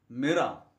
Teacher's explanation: In British English, the letter R is not pronounced when it comes at the end of a word. Mirror. Their R is silent.